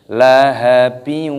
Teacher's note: hukumnya dibaca Idgham Bighunnah cara membacanya yaitu dengan cara didengungkan